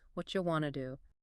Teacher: Oh, let's repeat that slowly for our listener because it is so important for listening comprehension. What do you becomes whatcha. Want to becomes wanna. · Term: connected speech